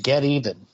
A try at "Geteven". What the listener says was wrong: that's that's pronounced getan by the way it's just one word it's not two words